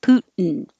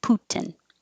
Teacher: when your tongue goes to the t position you can just hold it there and make the in noise